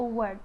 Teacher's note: Okay, the last but not least is the proximant sound, which is w. W is voiced bilabial semi-vowel